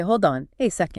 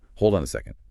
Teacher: Notice how the D in hold connects right to the O in on. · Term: connected speech